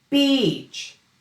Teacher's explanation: The word beach needs that long e sound. It needs tension. It needs length. It needs melody, or the two e's with different musical notes. beach If the vowel becomes simple, too relaxed, and too flat, the listener may hear the other word.